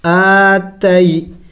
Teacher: حمزہ کے اوپر کڑی زبر ہے، اس کو ایک الف کے مقدار لمبا کرنا ہے